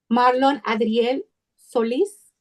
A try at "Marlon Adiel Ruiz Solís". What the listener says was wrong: Adiel con D. Adiel Ruiz Solís. Adiel. Ajá, Ruiz Solís.